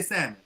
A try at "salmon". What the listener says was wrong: Okay, it is not salmon. for anybody watching, the L is silent. It is salmon.